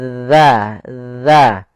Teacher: Ujung lidah kita menempel dengan gigi dari atas. Kemudian pada lafal dza sendiri ada mad thabi'i. · Kemudian ya, jangan dibaca iza waqab. Tidak ada desisan, tapi dia za. Ya, ujung lidah kita menempel dengan gigi sari atas.